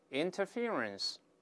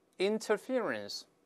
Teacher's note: 注意▁fear▁这个音节是重读的